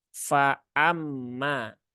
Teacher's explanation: ditahkikkan diperjelas suaranya menjadi Fa Amma bukan famma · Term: hamzahnya